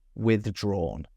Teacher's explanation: We're going from /ð/ to /ʤr/, okay? Two kind of different sounds.